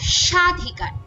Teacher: ব ফলার উচ্চারণ হয় না তবে আদিবর্ণের উচ্চারণে সামান্য ঝোঁক বা শ্বাস আঘাত পড়ে